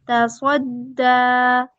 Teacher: دا مضبوطی کے ساتھ ادائیگی ہوگی کیونکہ دال جو ہے حروف قلقلہ میں سے مشدد ہے تو اس وجہ سے زیادہ مضبوطی چاہیے ہمیں.